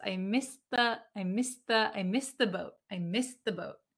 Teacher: this kind of d a little bit disappears